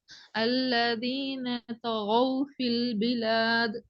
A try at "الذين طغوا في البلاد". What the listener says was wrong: கடைசி வசனத்துல இறுதி குழப்பம். வசனத்தை இறுதியில அந்த ராகத்தோட வருது இல்ல, இந்த இடம் குழப்பத்தில் முடியுது. நீங்க உங்களுக்கு எழுத்து உச்சரிப்பு நல்லா கேட்டுக்கும். எழுத்து உச்சரிப்பு நல்லா உச்சரிக்கிற மெத்தடும் சரி பிள்ளைன்றல்ல, பட் ஓதுறங்கிறது நடக்குது இல்ல, அதான் பிரச்சனை. ராகம் எடுத்து ஓதுங்க. இது மெட்டு ராகம் எடுத்து ஓதேலும்.